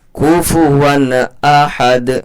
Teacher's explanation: कुफुवन अहद, तनवीन के बाद हुरूफ हल्की के 6 हरफों में से हमज़ा आ रहा है, जल्दी से अदा करेंगे। इज़हार का कायदा लगेगा, गुन्ना मद्दा इख्फा नहीं होगा